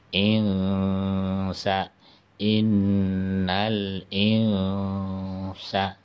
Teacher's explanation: Jadi ketika ada nun mati atau mim bertemu dengan huruf sa, maka cara membacanya dipanjangkan 2 harokat kemudian disamarkan. Insa, jadi nunnya itu samar-samar langsung masuk dalam huruf sa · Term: hukum ikhfa